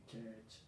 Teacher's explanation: Y si tengo una CH y tengo otra CH, y esto es una E larga, una schwa larga, mejor dicho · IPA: /tʃɜːtʃ/